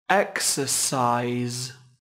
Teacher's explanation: từ nay có hai âm tiết trọng âm rơi vào âm Tiết đầu tiên các bạn nhé